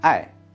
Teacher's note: one Chinese character, Ai, the fourth tone, or love in English